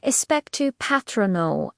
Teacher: Second, the casual American version. Listen for the flatter a as in cat and the slightly quicker pace.